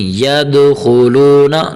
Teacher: یہاں حرف دال کو کلکلا دینا ہے